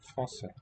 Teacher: And here, that letter that we saw in Turkish also, that modified C, means pronounce it as a voiceless S.